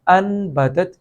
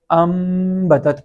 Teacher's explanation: لیکن عربی میں ہوتا یہ ہے کہ اس نون کے اوپر ایک چھوٹی سی میم ہمیں لفظوں میں لکھی ہوئی بھی نظر آتی ہے، جیسا کہ یہاں پہ انبتت کی بجائے ہم اسے امبتت پڑھیں گے، اس لیے کہ نون ساکن کے بعد ہمیں یہاں پہ با نظر آ رہا ہے · نون کی جگہ پہ میم کی آواز نکال کے پڑھتے ہیں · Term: نون کو میم سے بدلنا, اقلاب